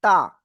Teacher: জিহ্বার আগায় উপরে দুই দাঁতের গোড়ায় লাগিয়ে আপনার উচ্চারণ করতে হবে তা